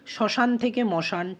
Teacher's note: শ্মশানের ক্ষেত্রে তালব্যশয়ের এই ব্যঞ্জনের লোপ ঘটেছে